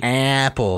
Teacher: as a midwesterner you have to shove that a way up in your nasal sinuses